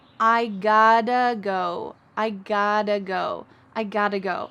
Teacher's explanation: when we reduce that we cut out have and got to becomes gata got but we don't pronounce the · in american english the t's change to a d sound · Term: reductions